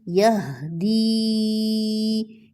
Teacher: کیونکہ یا مدہ ہے تو کھینچا اس کو